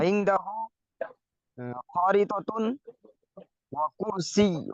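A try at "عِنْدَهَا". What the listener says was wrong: ইংদাহু কোথায়, ইংদাহা?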